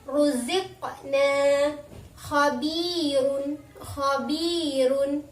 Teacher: huruf ro-nya berharokat dhammah dan berharokat dhammatain, maka harus dibaca tafhim atau tebal